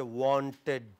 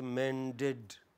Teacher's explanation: It is id following ta and da.